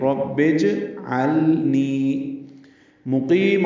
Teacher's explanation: نی یا مدہ ہے، یہ دو حرکات لمبا کرنا ہے